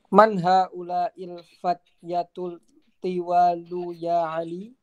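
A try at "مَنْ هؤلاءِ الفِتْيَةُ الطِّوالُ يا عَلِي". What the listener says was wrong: ini harokatnya pakai kasrah, bukan fatyatu. Fityatu, jamak dari fata.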